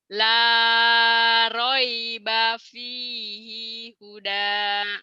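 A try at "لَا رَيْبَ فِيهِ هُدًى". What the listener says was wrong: I-nya kenapa panjang yang ini? La raiba fihi huda.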